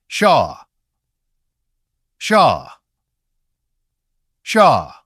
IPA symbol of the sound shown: ʃa